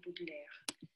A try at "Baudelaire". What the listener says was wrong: Тут в названии Baudelaire мне хочется, чтобы было немножко больше открытого о. Baudelaire. Видите, тут даже на у похоже. Видите, Бодлер. Кажется, что, ну, Бодлер. Нет, это не Бодлер. Француз даже может не узнать, что это был Бодлер.